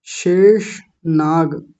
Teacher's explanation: तो मूर्धन्य शकार है और उससे पहले तालव्य शकार है